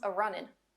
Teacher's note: Another dialect spoken in the mountains of Eastern America, Appalachian English, will often add an A to the front of an ing verb and drop the G from the end. So running becomes a runnin'.